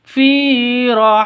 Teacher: Fi panjang dua ketukan ada ya mati diawali dengan kasrah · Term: Mad thi'i